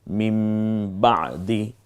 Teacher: যদি বা হরফটা শুধু আসে তখন এই ন টাকে ম পড়তে হয়